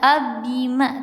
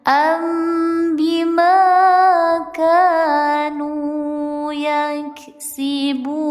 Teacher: Nun mati menghadapi huruf ba. Dibacanya disamar dengungkan. Ambima tidak dibaca abima tapi samarnya samarkannya ke huruf mimnya ya.